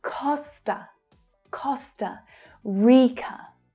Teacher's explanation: So, both unstressed syllables are schwa sounds there.